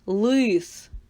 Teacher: і скажіть який перший звук в слові лис це звук л в слові лис звук л звучить твердо